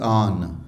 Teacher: ایرانی اب اسے بولیں گے بھی آن، پورا نون کے ساتھ